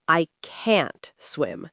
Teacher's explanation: Hear how can't is strong and clear. The t sound is very obvious.